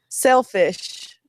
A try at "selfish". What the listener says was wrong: Sell instead of self. Sell fish.